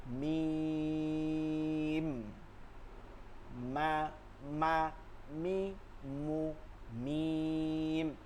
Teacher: মিমের উচ্চারণটা হবে কোথায় ঠোঁটের শুকনা জায়গা থেকে